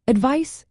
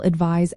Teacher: Advice ends with an S sound like ice, while advise ends with a Z sound like realize.